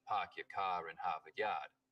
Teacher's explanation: Stereotypical Boston accents, of course, are non-rhotic, meaning no R sounds in park your car in Harvard Yard.